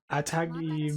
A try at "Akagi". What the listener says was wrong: Akagi. Not Atagi. There's not a T there. What are you, British, putting a T where there's not supposed to be any?